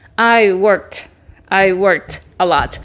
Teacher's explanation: Cuando tú pronuncias la última letra, work, el último sonido, no se activan tus cuerdas vocales, no vibra aquí. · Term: sonido sordo